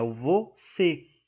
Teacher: Na palavra você, a última sílaba é a tônica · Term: oxítona